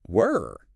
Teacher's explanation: Notice how your tongue is pulled back, tense in the middle of your mouth.